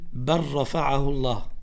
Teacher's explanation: Diese Lam hat einen Entstehungsort, das ist Barakallahu fikum, vom Zungenrand. Und Ra, Entstehungsort, ist Zungenspitze. Aber wenn wir Ra sprechen, dann hat Ra eine Eigenschaft, das heißt Al-Inhiraf. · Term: Assimilation